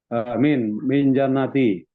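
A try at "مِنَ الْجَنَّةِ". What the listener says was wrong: Ah, ada alif lam sehingga kita bacanya bagaimana? Minal jannati.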